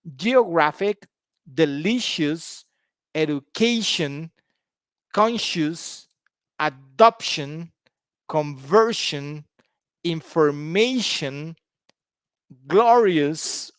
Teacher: So they all have their stress on the penultimate syllable, the penultimate syllable.